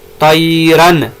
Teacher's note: یہ جو نون کی آواز ہے اس کو ظاہر کرنا ہے کیونکہ آگے حروف حلقی الف آ رہا ہے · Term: اظہار